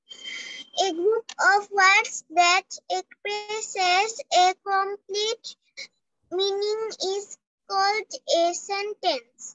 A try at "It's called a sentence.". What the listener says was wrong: Called বলবো না, কো বলবো না. It's a কো. সির উচ্চারণটা কো হবে.